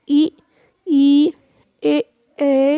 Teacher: आपकी जो जिह्वा है, जीभ है, उसके जो आगे का भाग है वो ऊपर को उठता हुआ दिखाई देगा, आपको प्रतीत होगा, तो ये अग्र स्वर कहलाते हैं।